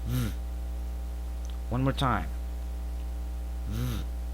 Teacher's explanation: we pronounce it with throat vibration and we make it shorter than the F. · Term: V sound